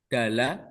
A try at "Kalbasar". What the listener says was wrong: ini kan huruf K.